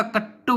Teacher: इनमें तालव्य और मूर्धन्य स के स्थान पर दंत्य स हो जाता है, जैसे श्रावक, श्रावक का सावग हो जाता है। दंत्य तय वर्ग ध्वनियों के स्थान पर मूर्धन्य तय वर्गीय ध्वनियां पाई जाती है, जैसे कृत्वा, कृत्वा का कट्टू हो जाता है।